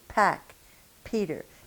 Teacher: see if you don't feel a pretty significant puff of air coming through. Pack, Peter, and you'll feel the air against your fingers.